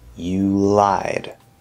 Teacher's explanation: You're just gonna go from the oo, bring that tongue up into the ul.